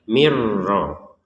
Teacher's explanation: Karena kalau dibaca seperti itu berarti nun sukunnya dibaca dengan jelas. Sekarang dari yang jelas kita masukkan ke ro sehingga terbacanya mirro.